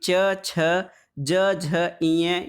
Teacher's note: तालु और जीभ के स्पर्श से बोले जाने वाले शब्दों को तालव्य कहते हैं। इसके अंतर्गत ई और च वर्ग यानी च, छ, ज, झ, इय, य और श आते हैं।